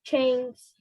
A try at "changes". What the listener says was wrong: Okay, you didn't read the S. Read that word again. Without S, change. With S, changes.